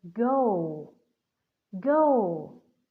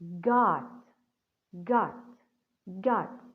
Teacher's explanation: in the word go the vowel o here we have the long vowel or a long sound o but in the word god the word is closed by the consonant t so the sound for the vowel here is gonna be short